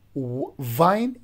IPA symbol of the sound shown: v